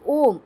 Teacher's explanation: एक स्वर और होता है जिसको प्लु लुप्त स्वर बोलते हैं। दो मात्राओं से अधिक समय लगते हैं इसमें। जैसे ओम इसमें तीन मात्राएं जुड़ी हुई हैं।